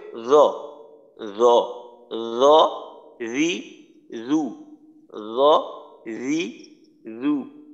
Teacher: উচ্চারণটা হয় জিহ্বার আগা সামনের উপরের দুই দাঁতের আগার সাথে লাগানোর কারণে